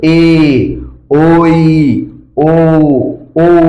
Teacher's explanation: এগুলোর আওয়াজ মানে সময়টা দীর্ঘ হবে, যার কারণে আমরা বলি দীর্ঘ ই, দীর্ঘ উ। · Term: দীর্ঘস্বর